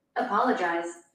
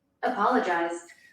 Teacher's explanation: a ênfase no PO, apologize, é uma sílaba tônica, porém não é a sílaba tônica mais forte